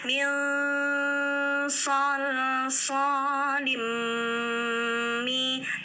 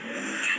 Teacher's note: tanwin bertemu mim, idgham bi gunnah. Jadi lin menjadi lim ya.